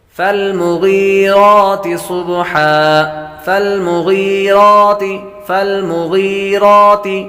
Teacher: غین حروف مصالح میں سے ہے، یا مدہ ہے، یا کو لمبا کریں گے، را پر کھڑی زبر ہے تو را کو بھی لمبا کریں گے